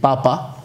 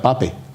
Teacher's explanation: La A tónica de final de palabra pasaba a E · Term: la Andalucía de la E